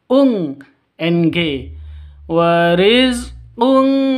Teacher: Tanwin bertemu dengan kaf. Cara bacanya samar didengungkan. Siap-siap ke huruf kafnya. Tanwinnya ditambah dengan ng. Jadi bacanya ung seperti itu ya. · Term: dengung samar